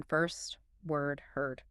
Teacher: The American R. It's strong, right? Almost like a growl. · It colors the vowel sound, makes the vowel sound like the R itself. So the vowels in first, word, heard, learned, they all have that R quality baked into them.